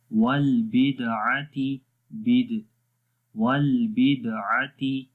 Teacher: دال کے اوپر اگین قلقلہ ہوگا، کمزور قلقلہ ہے